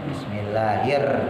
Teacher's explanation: jadi getarannya nggak sampai lebih dari 2